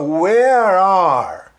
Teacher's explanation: Olha só, se você tapar aí a letra E de where, você vai ver que o R eu emendo com o A do are